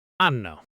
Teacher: One word, said with a shrug usually. it's not even 3 words anymore, it's one mumbled sound.